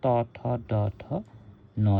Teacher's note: such sounds are produced by letting the tip of the tongue touch the alveolar ridge তো alveolar ridgeত টাচ কৰি যেতিয়া নেকি আমাৰ জিভাখনে টাচ কৰিব